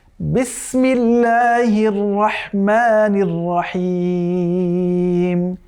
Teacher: ছোটোবেলায় যখন আমরা মক্তবে পড়েছি, আমাদের উস্তাজরা কারি হুজুররা আমাদেরকে পড়িয়েছেন, যখন এই যে সিন সিন বলতে হবে তখন দোয়েল পাখির মতো হালকা করে শীষ দিয়ে আওয়াজ করতে হবে